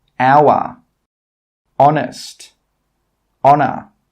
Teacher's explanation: In all of these words, we are not pronouncing the H sound. We are not pronouncing the letter H.